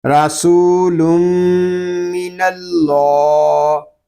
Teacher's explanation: یہاں اللہ پاک کے لام کو ہم پر پڑھیں گے کیونکہ اللہ پاک کے لام سے پہلے حرف پر زبر آ گیا ہے